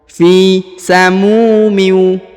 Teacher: huruf mu, perhatikan yang ini dipanjangkan 2 harokat karena di depannya terdapat waw sukun atau waw mati